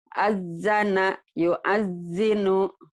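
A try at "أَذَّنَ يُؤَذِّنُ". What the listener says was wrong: Zal, azana jangan ajana. Zalnya agak keras dikit. Rapun dikit, keras dikit. Azana yu'azzinu. Azana yu'azzinu.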